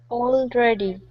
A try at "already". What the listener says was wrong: Okay, now watch that R. So instead of saying dready, already. Curve the tongue. Already.